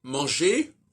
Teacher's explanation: exemple manger hein euh ça séit er ça se prononce pas on prononce pas le R de manger